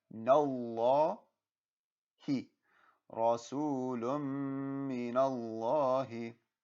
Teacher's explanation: Now the noon has a fatha and it's going to connect to Allah's name, so Allah's name will be pronounced with a full mouth